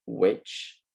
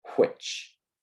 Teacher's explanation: you will feel a little puff of air with the Hermione Granger version of the word so which but with the question version of this word when pronounced that way you should feel a much bigger puff of air